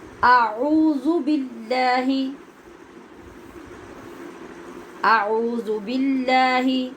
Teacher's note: باللہ میں لام کو باریک پڑھنا ہے، کیوں کہ اس سے پہلے زیر ہے